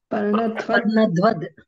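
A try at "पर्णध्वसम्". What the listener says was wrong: Don't forget sakara.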